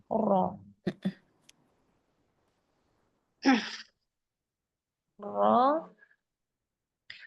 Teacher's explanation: Dari segi nafasnya, dari segi udara atau nafas, dia dibaca jahar. · Dengan gusi atas ya, iya. Jadi ujung lidah dan sedikit punggung lidah bertemu dengan gusi atas. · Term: huruf ro